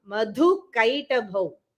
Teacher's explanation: The dha is the Mahaprana, not the ka.